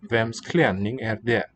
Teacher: Here we drop the T in det